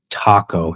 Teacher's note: la T en inglés es alveolar